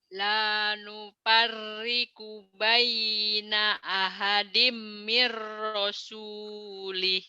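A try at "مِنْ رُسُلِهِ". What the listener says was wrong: Itu kan domah toh. Tapi yang ibu baca tadi mirosuli, jangan ro tapi ru. Ini kan domah.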